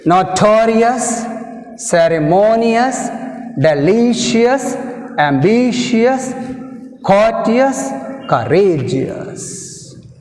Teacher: All these words have stress mark on the penultimate syllable, that means second syllable from the end.